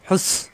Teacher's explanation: সাথে, বিল হাফেশ হু কণ্ঠনালীতে চাপ দিয়ে হু মিলবে সিনের সাথে, সিন শক্ত জিব্বা নিচে দাঁতে লাগবে